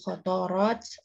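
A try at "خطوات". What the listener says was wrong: khutuwat itu pakai waw ya. Khutuwat al-marsumat lahu salafa.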